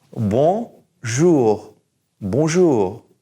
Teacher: So we're going to say jou, and then we're going to push that R to the very back of our mouth.